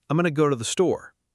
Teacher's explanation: Am almost disappears into I'm going to becomes going to and to before the becomes a tiny weak t sound. The important words go, store stay clear and strong.